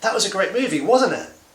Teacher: rising intonation because i suspect i know the answer to the question